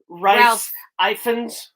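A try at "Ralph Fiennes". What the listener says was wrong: Yeah, it's not pronounced Ralph.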